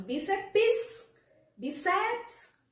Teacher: Nós temos o bi como a sílaba tônica, sílaba mais forte. E aí a gente vai olhar como ela é a sílaba mais forte, o bi.